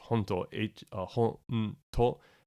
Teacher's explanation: You see this with hontoni, often gets written in katakana, and when it does, it drops that final u sound